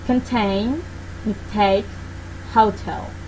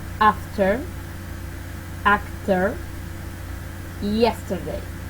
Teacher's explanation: When the T is at the beginning of the stressed syllable, it is aspirate.